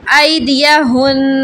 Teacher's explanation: اور اچھا اس میں خاص خیال اس طرح رکھیں گے کہ نون تشدید مشدد پر آپ غنہ کریں گے وقف میں